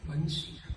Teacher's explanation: તો બંસીમાં એક તો આપણને કૃષ્ણ અભિપ્રેત છે, અને આ બંસી શબ્દ જે છે ને એ ઓષ્ટ્ય વર્ણ છે. તમે બ બોલો એટલે બે હોઠ ભેગા કરવા જ પડે